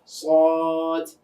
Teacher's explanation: তো সদের মাখরাজ জিহ্বার আগা নিচের দাঁতের পেট, সদ। কিন্তু আওয়াজটা আমরা কিন্তু মুখের ভিতরে মোটা করছি। সদ যদি চিকন হয় তাহলে কিন্তু শব্দ করতে গেলে ওটাকে সিনের মতো শোনাবে।